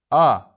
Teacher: A qalın açıq dodaqlanmayan saitdir